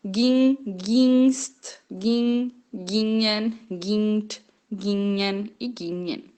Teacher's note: Lembrando que o G depois de N não se fala, por isso que eu tô falando gin. Porque o G depois do N eu não falo